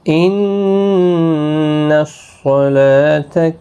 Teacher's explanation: نون مشدد پر غنہ ہوگا، صاد پر پڑھا جائے گا، لام کے اوپر کھڑی زبر ہے، ایک الف کی مقدار کے برابر کھینچیں گے۔